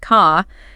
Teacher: where that R sound is dropped after a vowel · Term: non-rodic